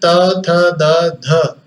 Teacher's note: चारों वर्णों का उच्चारण करते हुए आपकी जीवा ने आपके दांतों को स्पर्श किया